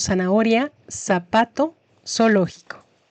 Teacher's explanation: Y llegamos a la última letra del abecedario, la Z, que como mencionamos, para cierta parte de España se pronuncia distinta, pero la mayoría de los hablantes la pronunciamos como una S